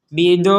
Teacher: Jadi panjang dulu bido 6 harokat, baru setelah itu menekan ke huruf ro.